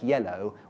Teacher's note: a word like yellow which has a stress syllable to begin with a second syllable which isn't stressed but does have a full vowel in it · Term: unstressed syllable